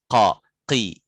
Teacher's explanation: tenggorokan paling belakang, yang belakang sekali, fauqu itu qaf, qa, qi, belakang sekali.